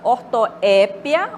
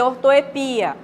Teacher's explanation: eu posso falar com acento tônico no E ou no I, né? Na última sílaba aí, né?